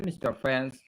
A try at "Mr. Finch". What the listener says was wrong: Mr. Finch mungkin atau Nggak ada R-nya toh? Jangan dibaca friend. Teman itu Finch kalau